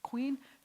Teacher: this Q sound comes from further back in your throat